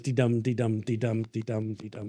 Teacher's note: verse, the iambic pentameter, goes dee-dum, dee-dum, dee-dum, dee-dum, dee-dum. It's a heartbeat.